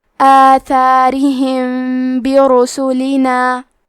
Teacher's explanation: اخفاء کا معنی ہے چھپا دینا، تو ہم میم ساکن کو چھپاتے ہوئے اور غنہ کے ساتھ یہ حکم کو ادا کریں گے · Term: الاخفاء الشفوی